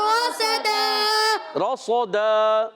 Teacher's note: صاد حرف مستعلیہ میں بھی ہے، حرف مطبقہ یعنی ایکسٹرا موٹے حروف میں سے بھی ہے، ایکسٹرا موٹا بھی کرنا ہے